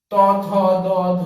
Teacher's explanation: এই সকল ধ্বনি উচ্চারণের সময় জিহ্বা মূল দন্ত স্পর্শ করছে